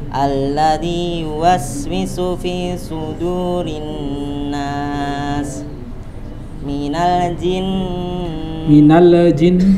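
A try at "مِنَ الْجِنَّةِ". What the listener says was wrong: hati-hati, minal jinnati wan. Huruf yang tidak qalqalah jangan diqalqalahkan.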